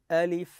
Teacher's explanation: حرف الالف لا يمد فاني اقراه الف بدون مد لكن حرف اللام اقول لام وحرف الميم اقول ميم اذا هذه